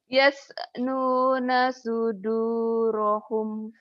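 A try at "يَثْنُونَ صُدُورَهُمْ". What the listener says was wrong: Masya Allah, setiap huruf mati ada e-nya ya. Latihannya gini sebetulnya gampang ya. Tadi ikromu dikasih garis ya di sini ya. Dikasih garis. Nah, kamu bacanya diputus. Yas. Yas. Nuna suduro. Latihannya gitu. Yas. Kayak yes.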